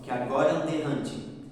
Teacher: Então a gente meio que come um A. · Então fica uma sílaba poética só. Houve a união de 2 vogais.